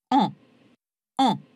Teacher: Eh bien, il en va de même avec A, lèvres légèrement arrondies, bouche bien ouverte, et en, où, vous le sentez là aussi, le voile du palais s'abaisse et chasse une partie de l'air vers le nez.